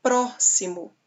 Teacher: a antepenúltima sílaba forte então nós temos uma palavra proparoxítona